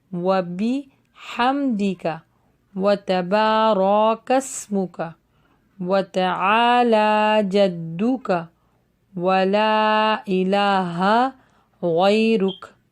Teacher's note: واو کے اوپر ہونٹ گول ہوں گے